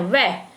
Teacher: जिससे क्या है, जब हम वह का उच्चारण करते हैं तो जो हमारी जिह्वा है, हमारे जो दांत हैं वो नीचे वाले होठ को स्पर्श करते हैं। वह, जब भी हम वह का उच्चारण करते हैं हमारे नीचे वाला जो होठ है वो दांतों से टकराता है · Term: दंतोष्ठ